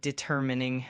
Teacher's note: with the emphasis on the second syllable